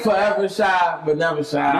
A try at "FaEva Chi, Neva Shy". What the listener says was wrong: You said 4. Nobody in Chicago pronounces their R's.